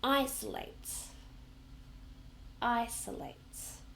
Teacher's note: So that's got three syllables and we stress the first one